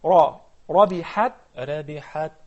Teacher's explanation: put a little heaviness on the ra because it's with the fatha. Ra.